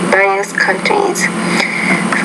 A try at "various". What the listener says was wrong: You want to say various, so you're not pronouncing that V with enough vibration. Very, various.